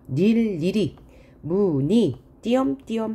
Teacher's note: 이 모음 의는 자음을 첫소리로 가지고 있을 때는 이로만 발음합니다. 자음을 첫소리로 가지고 있다는 것은 초성이 자음이란 얘기죠.